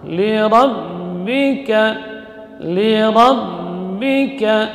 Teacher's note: Ra huruf takrir, ya, huruf yang memiliki getaran maksimal 2 getaran.